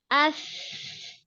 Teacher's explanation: Tapi kalau hams cobain, nggak ada yang bergetar sama sekali pita suaranya.